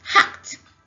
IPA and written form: hӕkt (Hacked)